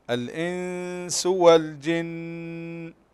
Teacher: النون ساكنة وبعدها السين إخفاء، هذا الإخفاء حقيقي، فقلنا بمقدار حركتين